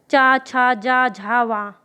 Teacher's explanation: तालु से निकलती है, यानी कि टंग के ऊपर भाग से